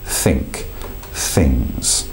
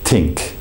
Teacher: those fricative uh THS th voiceless it has no sound to it